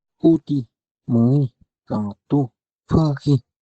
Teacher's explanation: La vocal cerrada central